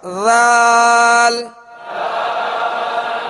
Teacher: اب اس میں زال یعنی سختی کی آواز پیدا نہ ہو، سیٹی کی آواز اس میں پیدا نہ ہو، اس بات کا خیال رکھیے گا.